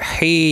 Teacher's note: یا مدہ ہے، 1 الف کی مقدار کے برابر کھینچ کر پڑھیں گے